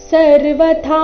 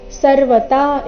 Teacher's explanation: ಸರ್ವಥಾ ಇಲ್ಲಿ ಥಾ ಮಹಾಪ್ರಾಣ ದೀರ್ಘ ಸರ್ವತಾ ಇಲ್ಲ